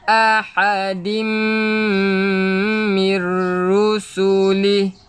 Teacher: Kena ingat nun yang kosong memang kena dengung, tetapi bila berjumpa lam ataupun ra, kita tak perlu dengung. Kita masuk terus dekat lam ataupun ra tadi.